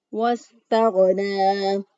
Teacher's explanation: منہ کے پاس سے گلے کا وہ حصہ جو منہ کے پاس ہوتا ہے وہاں سے غین ادا کیا. وَاسْتَغْنَىٰ سین کے ادائیگی میں سیٹی کی آواز پیدا کی. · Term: ادنی حلق